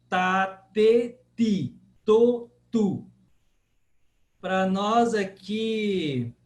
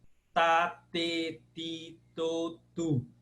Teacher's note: a sua língua sempre no mesmo ponto de articulação, que é atrás do dente superior